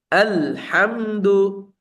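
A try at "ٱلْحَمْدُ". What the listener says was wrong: আল। আল এরকম হয়ে যাচ্ছে, আইনের মতো হয়ে যাচ্ছে।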